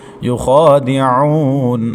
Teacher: یا کے بعد خوا موٹے حروف میں سے موٹا پڑھیں گے اور کھڑی حرکت کی وجہ سے ڈیڑھ الف تک کھینچیں گے۔ یخادعون، عین حروف حلقی میں سے ہے، وسط حلق کے درمیان سے ادا کریں گے۔ عین کے بعد واو ساکن ہے، اس سے پہلے عین کے اوپر پیش تو واو مدہ ہے، ایک الف تک کھینچیں گے۔ · يخادعون، یا متحرک ہے، اس کے اوپر پیش ہے پڑی حرکت میں، تو اس کو بغیر کھینچے پڑھنا ہے۔ یا کے بعد خوا موٹے حروف میں سے موٹا پڑھیں گے اور کھڑی حرکت کی وجہ سے ڈیڑھ الف تک کھینچیں گے